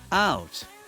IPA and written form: aʊt (out)